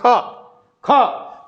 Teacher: इनका उच्चारण करते हैं तो हकार जैसी ध्वनि निकलती है, जैसे ख तो हकार, ख तो ह जैसी ध्वनि उत्पन्न होती है। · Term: महाप्राण